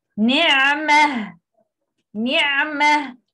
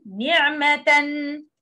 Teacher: Not included in this mat is female ha in Arabic, which exists at the end of noun. This letter is always read as a ha sakina when stopping on the word, and is always read as a ta in the case of continuous.